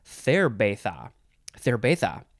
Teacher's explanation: if you're real Spanish, you'd say cerveza. Cerveza, with a little bit of a lisp